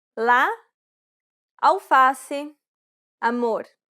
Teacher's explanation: This vowel sound is very similar to the A in father. This vowel sound is considered an open A sound because the jaw is low and the mouth is wide and open.